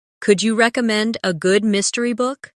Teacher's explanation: the stress naturally falls on recommend and mystery